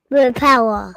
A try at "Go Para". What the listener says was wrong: Alright, don't say boo.